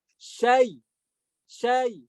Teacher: Jadi kayak syai, tapi nggak terlalu panjang matnya. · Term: lin